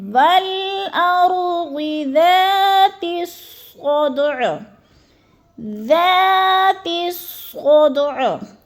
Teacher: والارض، ضاد کو بھی موٹا کرنا ہے، والارض ذات الصدع، ذات الصدع، ذال کو نرم کرنا ہے، تھوڑا سا کھینچنا ہے، الف مدہ ہے، اور صاد میں اصل ہم وقف دیکھ رہے تھے، صاد دال پہ قلقلہ ہے، دال کو ہم نے ہلا کے پڑھنا ہے